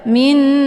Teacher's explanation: dengan Idgham biun cara bacanya nunnya juga dileburkan ke dalam huruf na yang berharakat dengan cara ditekan kemudian ditahan lebih kurang dua harakat